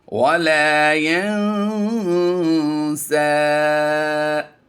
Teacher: اب یہاں پر ہم وقف کر کے پھر پڑھتے ہیں وَلَا يَنسَى. ہم نے الف مدہ کے ساتھ اسے پڑھ دیا. یہ یا جو ہے یہ الف بن جائے گی